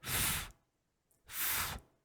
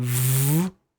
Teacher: it's not very powerful like f f very soft like whispering right and V V is there's more power in in it more vibration it's actually here that makes the difference so nothing is different · F and V voiceless and voiced